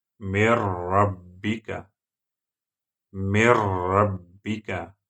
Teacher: When these 2 letters are after noon sukun and tanween, then you will have to apply rule of idgham and second type of idgham, idgham without Ghunnah. You don't need to make nasal sound while doing idgham rule. For example, when ra comes after noon sukun, min rabbika, min rabbika, you have to add noon sukun into ra.